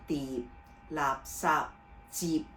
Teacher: 喺個尾音嘅部分咧，就要做翻呢個合口嘅音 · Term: 輔音尾韻